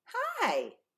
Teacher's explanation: if I say hi I'm going from high to low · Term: pitch